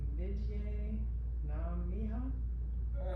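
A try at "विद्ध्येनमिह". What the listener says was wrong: I think this is Vidhi. The ya is really an e.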